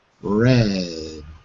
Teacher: So when I say red, my tongue is floating, but it's below the alveolar ridge.